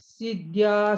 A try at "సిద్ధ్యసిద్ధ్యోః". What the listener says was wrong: సిద్ధ్యా సిద్ధ్య అని సిద్ధ్యా ఆకారం పెట్టకుండా సిద్ధ్య